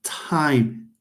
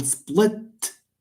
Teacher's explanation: T plus H plus I. I leave a puff of air after I pronounce T.